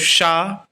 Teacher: अपनी जिह्वा को तालु पे रख के बोलेंगे तो शा, तो ये तालव्य शा हो गया